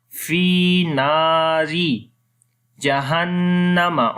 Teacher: on the noon there is a shad sign, so we make gunna